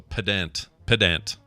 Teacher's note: it's pronounced pedant, even emphasis on both syllables